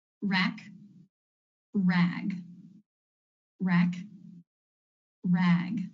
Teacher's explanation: the second word is just a little bit longer that's because of the voice consonant at the end